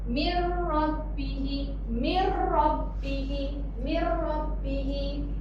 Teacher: Yang ni dia bukan min. Dia masukkan terus min kasrah ni masuk ke dalam syaddah.